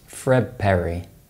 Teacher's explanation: D is replaced by B, T is replaced by P, and N is replaced by M when they're followed by B, P, or M.